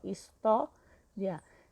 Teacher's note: a penúltima sílaba é forte e terminou com ditongo, ó, ria. Então, o tó é acentuado.